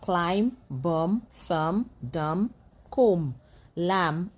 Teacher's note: You do not pronounce the B becomes silent.